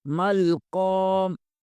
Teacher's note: قاف زبر کے آگے الف مدہ ہے، اسے 1 الف کے برابر کھینچیں گے۔